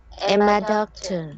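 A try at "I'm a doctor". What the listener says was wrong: Very good. So that is connected speech.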